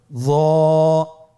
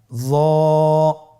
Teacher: জিহ্বার আগা, সামনের উপরের 2 দাঁতের আগার সঙ্গে লাগিয়ে উচ্চারিত।